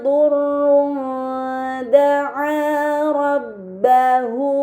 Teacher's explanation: dhammahtain harus dibaca secara samar dengan gunnah yang dipanjangkan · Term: ikhfa hakiki